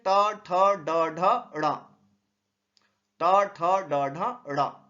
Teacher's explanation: जिन व्यंजनों का उच्चारण जिह्वा की नोक प्रायः उलट कर मूर्धा पर स्पर्श करती है उसे मूर्धन्य कहते हैं।